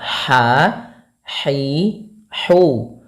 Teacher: Bagaimana cara pelafalan ha-nya? Yaitu dari tengah tenggorokan kita. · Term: ha kecil